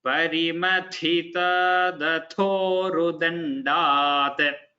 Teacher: we have Mahaprana tha followed by ta, then da, then tha again.